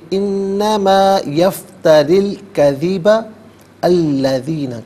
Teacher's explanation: یفتری میں را کے نیچے زیر ہے، اس سے الکذب کے لام ساکن کے ساتھ ملائیں گے، درمیان میں سے الف نی حمزہ کو حذف کیا جائے گا